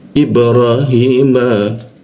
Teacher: Hi, lalu masuk ke hi, tenggorokan bagian bawah. Hi, ma, bibir bertemu bibir ya